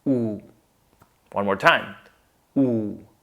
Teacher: a lot of you may want to say y at the beginning because you're familiar with other words like unique or university, but in this case, we just say oo. That's how we start. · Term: simple vowel sound